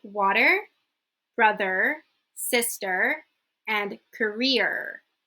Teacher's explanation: if you're from North America so Canada or the US you will pronounce it with a hard R sound